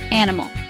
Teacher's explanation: It is a three-cllable word. Stress is on the first syllable.